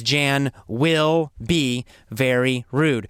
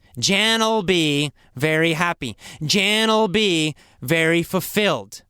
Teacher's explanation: in real conversation, normal conversation, we often will just say ol. We add ol to something for the future. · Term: ol sound